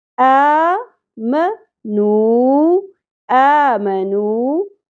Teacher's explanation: واو مدہ ایک الف کے برابر